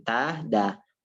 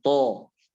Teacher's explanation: Jadi langsung kita kasih tahu makhrajnya dan sifatnya ta, da tipis, maka langsung ditarik ta, da. To tebal, to. Posisi rahangnya seperti biasa, to.